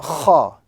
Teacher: This letter is pronounced from the upper region of the throat. So when a person might be visualizing KH in the English language with a grating sound, let us also understand that that letter originates from the upper region of the throat.